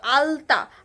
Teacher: আর আলতা হচ্ছে দন্তের সাহায্যে উচ্চারিত, দাঁতের সাহায্যে উচ্চারিত হচ্ছে